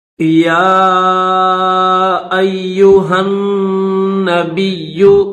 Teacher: یا کے اوپر کھڑا زبر بھی ہے اور چھوٹی مد بھی ہے، تو یا کو تھوڑا کھینچیں گے